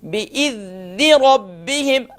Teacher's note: ذال پر کنٹرول کریں گے اور یہاں پر اس پر قلقلہ نہیں ہونے دیں گے